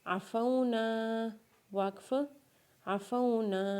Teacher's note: عین کے اوپر زبر پڑھیں گے، فا کو واولین کے ساتھ ملائیں گے زبر پڑھتے ہوئے، اور نون کو الف مدہ کے ساتھ پڑھیں گے، اور جب الف مدہ کے ساتھ نون کو پڑھیں گے تو نون کو ایک الف کے برابر کھینچیں گے زبر پڑھتے ہوئے